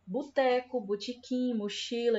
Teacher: A gente aqui no Ceará tem o costume de pronunciar esses Os aqui com som de U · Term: sotaque cearense